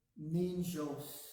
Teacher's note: you pronounce the N at the beginning of the jos and the ni together